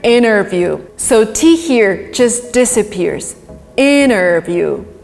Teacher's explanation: In America, interview. So T here just disappears. Interview. That's it. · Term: elision